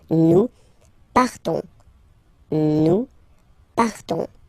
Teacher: You just have this on sound, nasal.